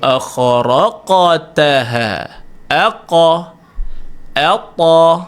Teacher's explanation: Dua huruf yang tebal pada huruf qalqalah yang tebal. Vowel O pada huruf qalqalah yang tebal.